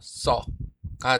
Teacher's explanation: 쓰다와 어가 만나서 써가 되는 것에서 으가 사라집니다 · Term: 탈락